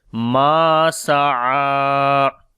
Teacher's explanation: Ma, this is alif madda again here we long. Sa'a, this ain we read from the middle of the throat, and also we long due to standing fatha